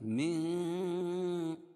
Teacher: من نون ساکن کے بعد حروف اخفا کے 15 حرفوں میں سے تا ہے، اس لیے اخفاء حقیقی ہوگا